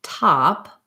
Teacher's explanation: So when I'm saying something like top, my mouth isn't starting in a rounded position. The ah is very unrounded, very clearly the ah sound.